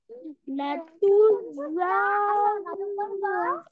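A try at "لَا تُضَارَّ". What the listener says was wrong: লাতু যর, বলেন। ওকে, আপনার এখানে মূলত তাসদিদের মতো হয়ে যাচ্ছে, লা তুজর এমন হচ্ছে, লা তুজর, বলেন।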